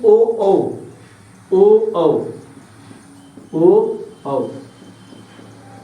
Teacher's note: इनका उच्चारण स्थान कंठोष्ठ, कंठ और ओष्ठ